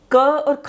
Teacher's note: क और ख बोला तो हमारा मुख तो खुला, परंतु बहुत कंपन नहीं हुई, किसी प्रकार कंठ में कंपन नहीं हुई।